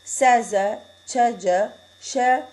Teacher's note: You see how the sa sound is voiceless and z is voiced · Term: Sibilant